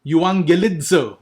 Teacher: The double G sound will produce the ng sound together.